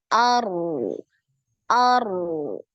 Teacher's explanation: Tapi dia harus ngalir. Jadi ketika sukun, ro-nya ini sekali aja getarannya, kemudian nanti dialirkan suaranya ya.